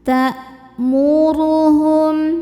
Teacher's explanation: Saat menekan huruf hamzah maka suara kita tertahan atau kuat, karena hamzah salah satu sifatnya adalah syiddah dari segi suara.